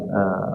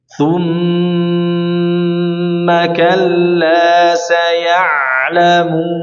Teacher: mim wan nun syuddida yang tasydidkan, maka disempurnakan gunnahnya, dilamain aja, ya dilamakan minimal 2 harakat, minimal seperti membaca mad 2 harakat.